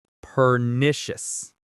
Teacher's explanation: The stress is on the nish.